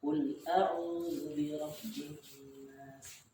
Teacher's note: Jadi penekanan intonasi ketika membaca itu di awal kata. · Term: nabar